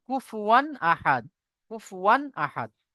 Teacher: তানবিন অথবা নুন সাকিনের আওয়াজকে বিনা গুন্না জাহির করে তাড়াতাড়ি পড়তে হয় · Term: ইজহারের কায়দা